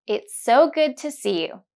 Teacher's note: There's a link of two consonants S in its and S in so it's so and another link of two similar consonants D in good and T in to good too.